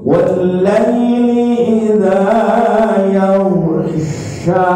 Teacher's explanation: keluarnya di tengah lidah, bukan sa. Kalau sa salah huruf, ini sya, shishu.